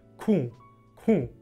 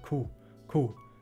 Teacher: Das wird mit einem deutlich nasalen u ausgesprochen